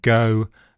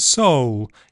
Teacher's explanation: It changes to o before dark L, so compare go and gold, so and soul.